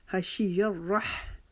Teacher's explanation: وحشی الرحمن، حشی الرح، را کے اوپر تشدید کی وجہ سے ہم یہاں رکاوٹ کریں گے اور اگلے ہا کی جو آواز ہے وہ ہم حلق کے درمیانی حصے سے نکالیں گے